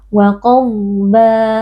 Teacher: Wa qadba, qaf huruf tebal, dhad juga huruf tebal, kita baca dengan mengangkat pangkal lidah. Tapi hati-hati jangan sampai kita mengqalqalahkan huruf dhad